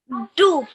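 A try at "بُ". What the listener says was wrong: Okay, so you are making more of a D sound. Take the wet parts of your lips, press them together, and then pull them apart. Boo.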